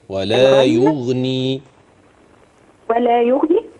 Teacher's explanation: خلي بالنا الغين لا تقلقل